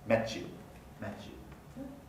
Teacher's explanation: And so the two segments become one, and they are blending together properties of each original segment. Notice that the palatal affricate has the place of articulation of the y, of the word initial glide, y. It's palatal.